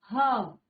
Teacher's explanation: बिल्कुल गले से आवाज आ रही है और एक गर्म वायु सी हमें महसूस हो रही है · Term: ऊष्म व्यंजन